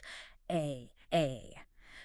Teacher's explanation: It's a guttural sound from deep in the throat. It almost sounds like a deep stretched out vowel or a very light gag reflex. If you tighten your throat and say ah you get close. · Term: aine